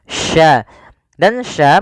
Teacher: bagaimana cara pelafalannya dari tengah lidah kita karena makhrajnya dari tengah lidah Sya dan Sya memiliki sifat namanya tafasi tafasi itu yaitu menyebarnya